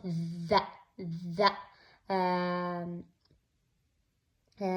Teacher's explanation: الذاء ما تطلع هواء